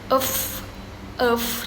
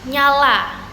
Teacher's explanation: mediopalatal ini merupakan bunyi yang dibuat oleh bagian tengah lidah mendekati atau menyentuh langit-langit keras